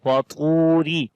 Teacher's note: ta we read in heavy sound, and also we long here due to waw madda. Waw has a jazm sign on it as like a sukun sign, and before the waw there is dhamma on the ta, that's why we long it وَطُورِ.